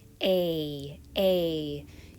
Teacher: a pair of troublesome vowel sounds a a and e so a is going to be one of our tense vowels it's going to be long it's going to require more muscles in your face a a use your cheeks use your tongue muscles and then